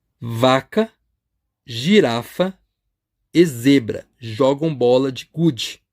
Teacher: a inicial de cada uma dessas palavras é um fonema sonoro